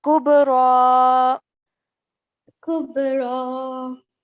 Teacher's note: Now this kaf is a thin sound, so try not to make that qaf sound